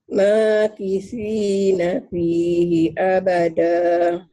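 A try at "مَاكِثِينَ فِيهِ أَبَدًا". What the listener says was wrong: Jangan ada hanya panjang. Abadanya hati-hati, jangan abadah. Jangan ada aja. Abada. Ditekan, ditahan. Abad.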